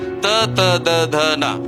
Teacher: ನಾಲಿಗೆಯ ತುದಿ ಮತ್ತು ಹಲ್ಲುಗಳ ಸಹಾಯದಿಂದ ಹೇಳುವಂತಹ